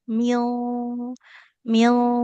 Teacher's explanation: karena nun sukun bertemu huruf qaf, huruf yang tebal, maka ketika dengungnya ikut tebal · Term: ikhfanya tebal